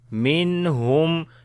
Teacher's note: After the noon sakin, the next letter is throttle letter, which is ha. So we make izhar like the clear sound of noon.